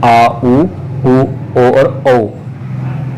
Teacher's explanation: ये पश्च स्वर पीछे गले के पीछे से बोल जाते हैं